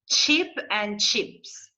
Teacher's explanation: It's like you want to say t, but then you make it into ch sound